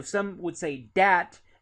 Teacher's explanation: they're more likely to say dat with that D instead of with the th